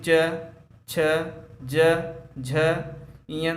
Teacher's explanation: हमारी जीभ जो है तालु को स्पर्श कर जाती है। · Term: च वर्ग